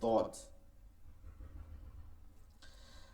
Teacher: ঠিক আছে, তো মাখরাজটা জিহ্বার গোড়ার কিনারা, জিহ্বার গোড়ার কিনারা, জিহ্বার গোড়ার কিনারা উপরের মাড়ির দাঁতের গোড়ার সঙ্গে লাগায়, উপরের মাড়ির দাঁতের গোড়ার সঙ্গে লাগায়, দদ।